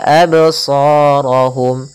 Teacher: Kemudian pada lafal sha, di sini ada hukum tajwid berupa mad tabi'i, yaitu ditandai dengan adanya fathah bertemu dengan huruf alif. Maka panjangnya di sini 2 harakat.